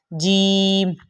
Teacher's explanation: معلوم ہوا کہ جب آپ جیم ادا کرتے ہیں تو آپ زبان کے بیچ والے حصے کو پہلے چپکاتے ہیں، پھر ہی جیم ادا ہوتا ہے